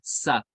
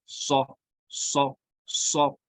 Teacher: سا کو ہم نے سو بنایا تو یہ موٹا ہو گیا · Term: پور